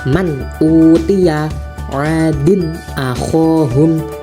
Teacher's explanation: Jadi itu bacanya kalau izhar halq ini jelas tidak boleh didengungkan.